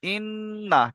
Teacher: ইন্না, নুনের উপরে তাসদিদ আছে, তাহলে তাসদিদ আলা কর দুবার পড়তে হয়, একবার আর ডান দিকের অক্ষরের সাথে মিলিয়ে একবারে নিজে নিজে, তাহলে ইন্না। আর নুনের উপর তাসদিদ থাকলে এক আলিফ গুন্না করা ওয়াজিব, তাহলে গুন্না করবেন ইন্না, কিন্তু টান হবে না, কারণ নুন জাবার না, এটা হারাকাতের পড়া, তাহলে টান দেবেন না, কি পড়বেন ইন্না।